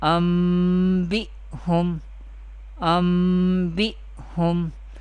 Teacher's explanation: Hamza नून ज़बर अन, बा हमज़ा ज़ेर बी अम्बी, हा मीम पेश हम, अम्बिहुम, अम्बिहुम. We change noon sakin into meme. We pronounce meme in pronunciation. We do not pronounce noon sakin. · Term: iqlab